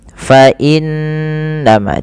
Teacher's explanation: wajib ditahan dengan gunnah, dengan sembari memasukkannya ke rongga hidung kita